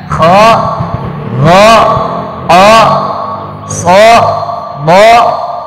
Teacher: Huruf-huruf tebal. Ya. Yang seolah-olah tuh ada huruf vokal O. Ini huruf tebal semua ya.